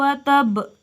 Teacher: Abi lahabiw watab disini terdapat Qalqalah kubra dengan pantulan yang kuat atau besar watab terjadi karena salah satu huruf Qalqalah wakaf atau berhenti dibaca